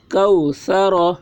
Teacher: واو ساکن سے پہلے زبر ہے، واولین ہوا، اس لیے واولین کو نرم آواز کے ساتھ جلد پڑھیں، معروف پڑھیں، مجہول آواز سے بچیں۔ کو، سا کے اوپر زبر ہے، زبر کو جلدی پڑھیں، تھوڑا بھی نہ کھینچیں۔